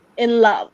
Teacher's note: in is softer. It's something we almost say in a breath while love takes a little bit more pronunciation. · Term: unstressed stressed